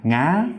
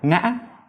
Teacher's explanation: isn't just a rising tone, it's a rising creaky tone. You can't just keep your voice rising and smooth, like ngã, because that sounds like zo sa.